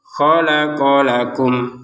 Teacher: Walaupun terpisah barisnya ya khalaqo qofnya langsung nyambung ke la. Jadi terbacanya khalaqo lakum ya.